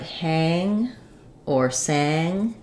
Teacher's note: here's where we have our a vowel like cat but when it's combined with the in sound the NG sound um it gets a little bit higher so um using a word like hang or sang can help